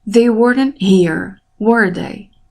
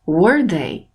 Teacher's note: A voz fica mais alta em were, é mais elevada em were, e mais baixa no they, no sujeito.